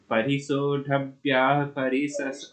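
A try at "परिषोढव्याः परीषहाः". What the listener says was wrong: परिसहा, हा छपा नहीं है इसमें, परिस लिखा है तो उसे परिसहा बोलें, सही पढ़ें।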